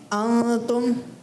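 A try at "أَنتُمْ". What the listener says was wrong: दोबारा थोड़ा गुन्ना करें ना। तुम, थोड़ा सा गुन्ना, नाक में आवाज़ को घुमाना है। तुम पढ़ते हैं ना। अफ़बिहाज़ल हदीसी अंतुम मुदहिनून।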